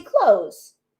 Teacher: you don't hear the th many times